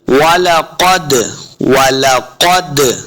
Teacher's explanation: वाव को पढ़ते हुए अपने होंठ गोल करने हैं। वाला, वाला, क़द, क़ाफ हुरूफ मुस्तालिया से, इसको मोटा करेंगे।